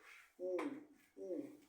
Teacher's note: posterior eh la i es una vocal anterior y alta y la u es una posterior alta